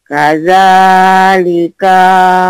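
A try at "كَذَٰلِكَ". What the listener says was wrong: Pendek. Pendek.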